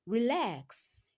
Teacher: In the word relax, lax is the second syllable and it takes the stress.